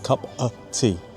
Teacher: we often shorten that of, the word of, down to a schwa, an so it becomes cup a tea.